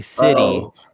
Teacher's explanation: Well, and that's another complicated one because you're referring to British English, but for me as an American, I say city. And the intervocalic T turns into a D in our dialect